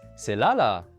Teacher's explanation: The two different tones here literally correspond to two of the four tones in Mandarin, specifically the third and the fourth.